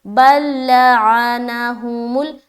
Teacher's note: یہاں پر کہیں پر نہیں کھینچنا کیونکہ سب کے اوپر، تینوں کے اوپر زبر ہے